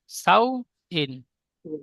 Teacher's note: অউলিন নরম আওয়াজে তাড়াতাড়ি পড়তে হয়, টান দেওয়া নিষেধ। তাহলে সাউ বলে একটু টান হয়ে যাচ্ছে, খেয়াল করবেন, টান হবে না।